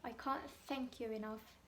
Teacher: T-nya itu nggak benar-benar dilafalkan. Ini namanya glottal T. Apa ya, kayak ketahan gitu di sini.